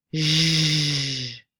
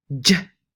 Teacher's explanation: And for the voiced versions, the fricative is the long sound zh, and the affricate is the short j.